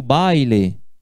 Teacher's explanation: Quando eu pronuncio baile, me gustou muito el baile, essas vogais A e I, eu pronuncio elas juntas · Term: ditongo